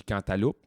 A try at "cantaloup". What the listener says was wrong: Parce que tu prononces le P à la fin. Cantaloupe.